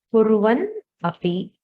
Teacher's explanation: There is an additional nakara which has come in. So it is a agama sandhi.